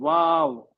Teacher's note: ये दोनों होंठ मिलके गोल हो जा रहे हैं